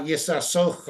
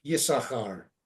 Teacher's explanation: And again, remember, we say Yisachar, we don't pronounce the second sin